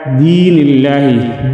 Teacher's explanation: دین میں یائی مدہ 1 الف کے برابر کھینچ کر پڑھیں گے